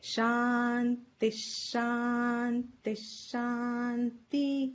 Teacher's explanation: And the second thing is two dots here after Shanti, the Visarga, followed by Sh, gets the sound of a half Sh